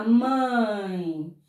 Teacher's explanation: Eu começo na vogal, que é forte, e vou para a semivogal, que é fraca. Mãe. Então, eu vou do forte para o fraco. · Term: decrescente